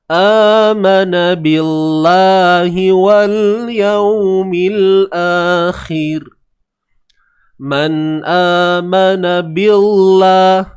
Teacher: Maka kalimah Allah ini perlu dilafazkan dengan nipis lah. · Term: tarqiq, nipis